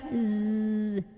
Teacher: Za itu ujung lidah nempel ke gigi seri bawah. Z, kayak suara lebah.